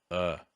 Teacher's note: the most relaxed sound in english the schwa